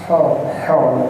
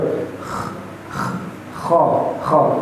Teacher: Letaknya di tengah tenggorokan. Mungkin kalau pada seorang ikhwan itu di dekat jakunnya. Kho. Jadi ketika benar-benar seperti orang yang sedang tidur. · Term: huruf kho